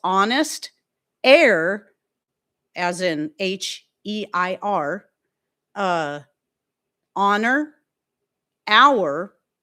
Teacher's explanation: These all start with H's that are silent.